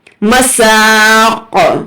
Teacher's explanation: یہاں پر جھٹکا دیں گے قاف پر، مساق، کیونکہ قاف جو ہے حروف قلقلہ میں سے ہے، یہاں پر ہمیں تھوڑا سا جھٹکا دے کر پڑھنا ہے۔